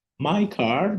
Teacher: o britânico por exemplo ele não fala ele só vai alongar a como ele não fala o r ele vai falar My Car meu carro my car my car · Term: a longo